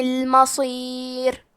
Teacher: کلمت المصیر میں حرف الصاد کو موٹی آواز میں پڑھیں گے